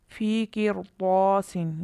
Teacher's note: یہاں طا حروف مستعلیہ را ساکن کے بعد آیا، اس وجہ سے اس را کو پر پڑھا گیا۔